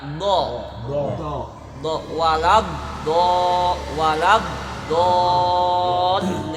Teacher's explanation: Kalau dod seperti huruf sod tapi tidak ada alifnya dan ada titiknya. Dod hurufnya cuma satu dari ihda hafatay lisan, di sisi lidah sejajar dengan geraham bagian atas.